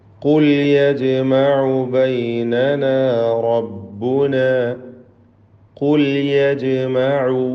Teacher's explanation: ഖാഫ് തഫ്ഖീം ചെയ്യേണ്ട അക്ഷരമാണ്, തടിപ്പിച്ച് ഉച്ചരിക്കേണ്ട ഇസ്തിഅലാഇൻ്റെ ഹർഫുകളിൽപ്പെട്ടതാണ് ഖാഫ്.